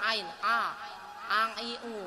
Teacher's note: Ain itu ada di pangkal tenggorokan kita